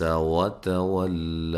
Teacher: عبس، ٹھیک ہے، تا کو باریک، ولا واو کو ادا کرتے ہوئے ہونٹوں کو گول کرنا ہے، واو کو لام سے سختی سے ملانا ہے، اور جب وقف کریں گے تو ایک الف کی مقدار کے برابر اس کو لمبا کرنا ہے، جو کہ اس کی اصلی مقدار ہے۔ · عین کو واضح نکالنا ہے، سین پہ باریک سیٹی کی آواز آنی چاہیے۔